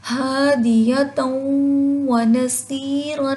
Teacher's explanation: واو آ گیا تو ادغام کے ساتھ ساتھ غنہ بھی ہوگا